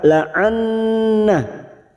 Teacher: nun yang bertasdid gunna musaddadah kita tekan selama 3 harokat. La'anna, nah ada mad yang bertemu dengan hamzah di lain kalimat, mad jaiz munfasil 4 harokat kita panjangkan.